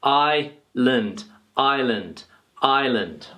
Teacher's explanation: we can see here that there's no s so Island so remember that the S is silent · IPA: /ai land/